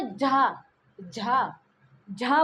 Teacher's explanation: झा बोलने में थोड़ा अधिक हमें जोर लगाना पड़ रहा है, थोड़ा संघर्ष करना पड़ रहा है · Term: संघर्षी स्पर्शी